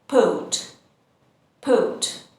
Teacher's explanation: In British English, we don't pronounce the R sound and we say airport, airport.